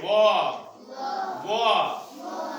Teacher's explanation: जो वा अक्षर है वा, वो दांत और ओठ की सहायता से बोला जाता है। दांत और ओठ की सहायता से। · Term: दंतोष्ठ